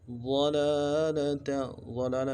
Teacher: ضلالہ میں لام کے اوپر کھڑا زبر ہے، ایک الف مقدار میں کھینچیں گے